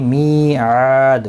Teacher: دال ساکن پڑھا جائے گا وقف کی صورت میں، اس پر قلقلہ بھی ہوگا · می یا مدہ ہے، آ الف مدہ ہے، دونوں کو ایک ایک الف کی مقدار کے برابر کھینچ کر پڑھیں گے ، اور دال ساکن پڑھا جائے گا وقف کی صورت میں،